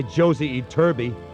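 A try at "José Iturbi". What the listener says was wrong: It's not Josie, it's Jose. In Spanish, J is pronounced like H.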